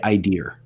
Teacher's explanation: a vowel that has an r like quality to it